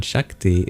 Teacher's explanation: The S with the accent over it in Shakti is just like the regular palatal sibilant we have in English